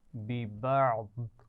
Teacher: آخر میں ضاد پر ساکن کرتے ہوئے وقف کریں گے